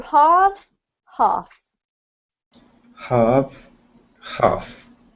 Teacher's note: Even with the US accent, this doesn't actually have an R in it, so you do need to get rid of the R sound.